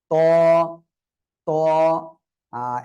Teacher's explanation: ত, জিহ্বার আগা দুই দাঁতের গোড়ার সঙ্গে লাগাবেন, লাগিয়ে সামনের উপরে দুই দাঁতের গোড়ার সঙ্গে লাগিয়ে উচ্চারণ করতে হবে ত।